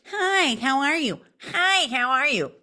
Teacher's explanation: And when they try to balance out their tone with a deeper tone, it's very difficult for them because their voice is so centered in their nasal cavity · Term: nasal tone